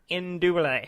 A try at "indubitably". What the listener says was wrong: How you say it? Oh, you dropped the whole syllable. That is not a thing. Indubitably.